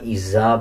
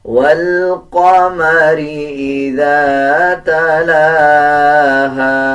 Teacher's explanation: جب ذال کو ادا کیا جاتا ہے تو زبان کی نوک دونوں دانتوں کے درمیان لے کے آئیں گے تب ذال صحیح ادا کیا جاتا ہے.